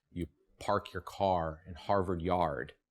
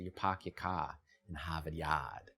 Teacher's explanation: it drops the rhotic R that follows a vowel